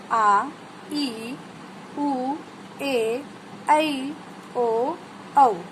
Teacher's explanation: जिन स्वरों को उच्चारने में ह्रस्व स्वर से दुगुना समय लगता है वे दीर्घ स्वर कहलाते हैं। आ, ई, उ, ए, ऐ, ओ, औ, ये 7 होते हैं।